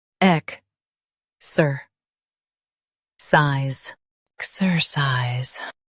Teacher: Stress ek and keep ser light.